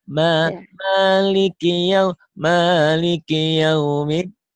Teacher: Ki-nya jangan panjang. Maliki itu sebenarnya nggak panjang